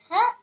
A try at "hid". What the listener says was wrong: It's not ha. H. H. Id. Hid.